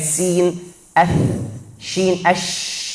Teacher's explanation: Karena dua pita suara sangat jauh. Nafasnya lancar. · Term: huruf hams